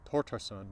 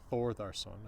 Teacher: The sound in thin or thing or Thor has become T, because we see Tortarsson, not Thorðarsson, as it would be in Icelandic.